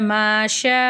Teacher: பெரிய மத் இருக்கு அஞ்சுல இருந்து ஏழு அலிஃப் வரைக்கும் நல்லா நீட்டி ஓதணும்